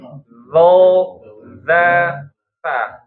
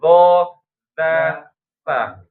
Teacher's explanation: Ujung lidah bertemu dengan ujung seri depan atas ya.